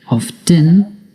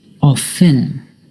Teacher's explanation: Often can be pronounced 2 ways, by pronouncing the T, often, or by not pronouncing the T, often.